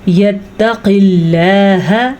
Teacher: لفظ اللہ کو باریک پڑھنا ہے کیونکہ لفظ اللہ سے پیچھے زیر ہے